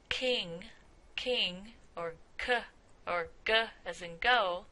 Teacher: the tongue is at, or at least near the soft palate or the velum. So if you say the word king, king, or k, or g, as in go, then you can feel that articulation or that touching of the velum in your tongue. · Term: Velar sounds